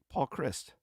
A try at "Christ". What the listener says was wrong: Oh, Christ. I thought you said Chris. You got to put that extra stink on the T there.